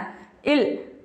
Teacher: இது மேல்வாய் பல்லின் அடியை நாக்கின் ஓரங்கள் தடித்து நெருங்குவதால் பிறக்கிறது.